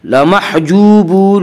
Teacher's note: واو مدہ وہ واو جو ساکن اس سے پہلے پیش ہو، واو مدہ کو 1 الف کے برابر کھینچ کر پڑھیں گے۔ لمحجوبون میں مد عارض وقفی ہوگا۔